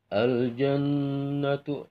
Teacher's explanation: ada nun yang bertasdid karena dibaca gunnah. Panjangnya itu kira-kira 2 harokat.